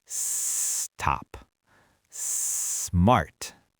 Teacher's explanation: You don't try to say the whole cluster at once. You start the S sound early and you hold it for a second to let your mouth prepare for the next consonant. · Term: S clusters